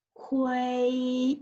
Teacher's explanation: So now number 4 is 灰, is first tone. 灰 is flat and high tones